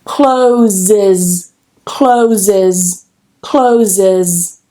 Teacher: Now I don't say closes, that would be quite hard to do. I need to add that extra syllable. I need to add that schwa.